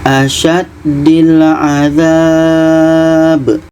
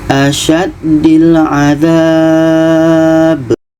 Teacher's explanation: Jadi dha ini kita panjangkan dulu, baru kita matikan huruf yang sukun ini. Baru kita matikan huruf yang terakhir. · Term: mat arid li sukun